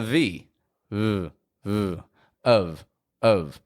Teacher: the F on the ending doesn't actually sound like an F it sounds like a v